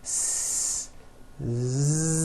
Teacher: So S has no voicing. S. Z has voicing. Z. So we say the S sound and the Z sound are also paired consonants.